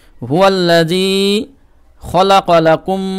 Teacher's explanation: মিম পেসকুম এবং মিমে তাসদিদ রয়েছে এজন্য কুমে গুন্না করবেন